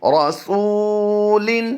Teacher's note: را کو پر کریں گے، سین کو لمبا کر کے پڑھیں گے، لام کو لمبا نہیں کریں گے